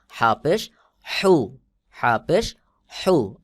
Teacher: হলকের মধ্যখান হইতে চাপ দিয়ে উচ্চারণ হবে